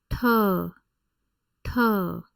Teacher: this is a retroflex aspirated T sound T by aspirated I mean that if you you place your